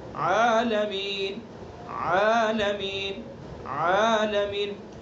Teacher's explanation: عین وسط حلق یعنی حلق کا درمیانی حصہ